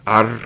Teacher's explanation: pronounced right up at the front of your mouth because this is Arabic not English R so AR is what we're going to say AR not alef